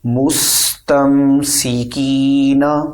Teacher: حروف مدہ یعنی یا مدہ کو کھینچ کر پڑھیں گے اور آخر میں نون کو بنا کھینچے پڑھیں